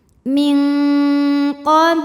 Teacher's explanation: nunnya dibunyikan samar-samar, siap-siap menuju makhraj huruf qaf disertai bunyi dengung. Bunyi dengungnya banyak, bunyi yang masuk hidungnya banyak. Kenapa? Karena huruf qaf makhrajnya jauh dari nun. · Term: ikhfa hakiki, dengung ikhfa ab'ad